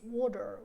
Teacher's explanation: the American transcription it's a different sound it's water okay and they don't pronounce the T like - it becomes like halfway between a D and an R